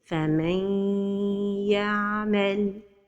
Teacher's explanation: The noon saakinah merges into the letter ya. In this case, the idgham is incomplete idgham.